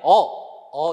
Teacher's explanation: 으보다 턱이 좀 더 내려와요